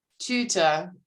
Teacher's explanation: That is a German oo, which is not a back vowel, but a front vowel